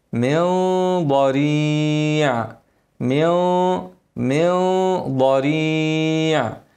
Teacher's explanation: طعام الا من نون ساكنه بعدها ضاد هنعمل اخفاء لكن الغنه مفخمه عشان ايه حرف الضاد الاخفاء عند الضاد لازم الغنه تكون مفخمه